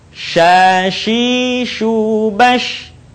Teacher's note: Huruf sya keluar dengan menyentuhkan tengah lidah kita dengan langit-langit. Diucapkan, mengalir udaranya, dan mengalir pula nafasnya.